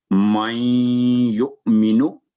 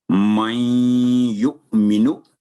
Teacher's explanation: یعنی من کی آواز ختم ہو گئی کیوں یا پر تشدید تھی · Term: غنہ